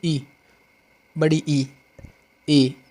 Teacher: अग्र स्वर यानी जीव के अगले हिस्से से बोले जाने वाले स्वर